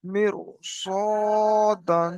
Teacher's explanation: এখানে র সাকিনের পূর্বে জের এসছে কিন্তু এখানে রটাকে বারিকের জায়গায় পুর করে পড়তে হবে কেন কারণ র সাকিনের পরে হরুফে মুসতালি সাতটি অক্ষরের মধ্যে সদ এসছে।